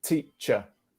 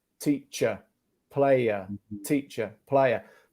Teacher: in British English, we have the classic schwa. · La R non c'è per niente.